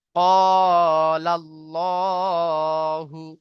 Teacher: লামের আগে জাবার এসেছে, তো আল্লাহ শব্দের লামকে পুর করে পড়তে হবে। তারপরে আল্লাহ শব্দের লামের উপরে খাড়া জাবার আছে, খাড়া জাবার আলিফ মাদ্দার সমতুল্য হয়, তাই খাড়া জাবারকে এক আলিফ পরিমাণ টান দিয়ে পড়তে হবে। · তারপরে আল্লাহ শব্দের লামের উপরে খাড়া জাবার আছে, খাড়া জাবার আলিফ মাদ্দার সমতুল্য হয়, তাই খাড়া জাবারকে এক আলিফ পরিমাণ টান দিয়ে পড়তে হবে। হার উপরে পেশ এসেছে, কি, হার উপরে পেশ আছে, পেশটি হলো হারাকাত, হারাকাতের পড়াকে তাড়াতাড়ি পড়তে হবে, টান দেওয়া নিষেধ।